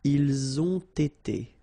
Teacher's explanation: So same thing here. You get first the liaison z and then you get the t.